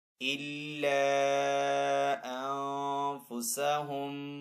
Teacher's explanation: نون ساکن کے بعد فا حروف اخفا میں سے تو یہاں پہ اخفا والا غنہ کریں گے